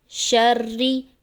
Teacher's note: شین میں شور ہوگا، شین کی آواز کو واضح کر کے پڑھیں گے